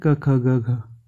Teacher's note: कंठ से क वर्ग निकलता है